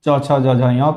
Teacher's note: जो तालु से बोले जाते हैं उसको च, छ, ज, झ, य कहते हैं।